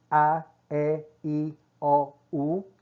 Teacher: Observe que começa o A boca fica bem aberta, no E mantém-se um pouco aberta, mas no I já vai fechando. Quando chega na letra U, a gente faz aquele biquinho do francês, né? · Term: vogais